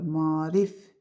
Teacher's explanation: 5 səs, 6 hərf var, düzdür. 3 hecalı sözdür, vurğu son hecadadır.